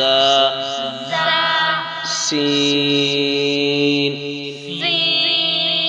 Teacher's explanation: سین سیٹی کی آواز آئے